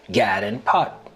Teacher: the lot trap vowels are reversed for god and pat to sound like gad and pot